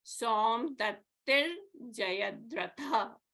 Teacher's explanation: So here the Visarga is preceded by E, right? And followed by a J, which is a soft consonant. So the Visarga becomes a Refa.